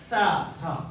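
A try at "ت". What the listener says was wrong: Ayan, dapat may hangin.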